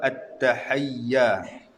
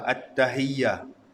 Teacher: Ha dengan ha hampir sama. Makhraj pun dia satu dia berada pada makhraj hulqum